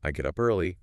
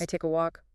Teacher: Try to link the words more, keep the stress on the verb, but let the function words flow quickly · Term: connected speech